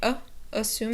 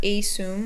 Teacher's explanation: the first syllable is a schwa so it makes an uh sound